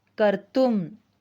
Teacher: Kru plus tumun, the form is kartum. Here, the vowel ru of kru has got changed into ar. This change is called guna.